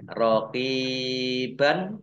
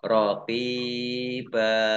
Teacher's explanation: Namanya mat iwad. Rokiban dibaca rokiba. Ini mat iwad dibaca panjang 2 harokat